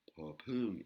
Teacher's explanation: Et là, pareil, pour les élèves qui apprennent la lecture thaï, vous verrez la consonne popung, qui est un P avec un H inspiré, où il y a de l'air qui sort, popung, et une intonation qui monte.